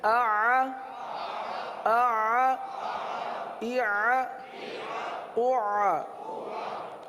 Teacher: یہ درمیان میں جو آ عین جو ہے نا یہ جاری رہے گا، عین کی آواز ختم نہیں ہوگی۔ اگر آپ نے پڑھا آ تو عین نہیں رہا، آواز جاری رکھنی ہے، آ، آ، اع، اع۔